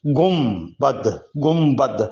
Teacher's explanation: جب اردو میں بے سے پہلے نون ساکن آ جائے، بے سے پہلے نون ساکن آ جائے تو نون کو غنے میں بدل دیا جاتا ہے، اور اس کے ساتھ بے سے پہلے میم کی آواز پیدا کی جاتی ہے۔ تو گنبد، اس میں نون کی آواز ظاہر نہیں ہوگی۔ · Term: نون غنہ